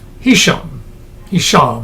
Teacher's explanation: I guess it's pronounced, the accent on the last syllable